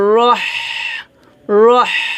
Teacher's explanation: হাচ্ছে হামসের হরফ। তো আমাদের এখানে চিকন করে বাতাস বের করতে হবে গলার মাঝখান থেকে